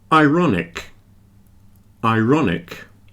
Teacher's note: you do hear the r in ironic but not in Iron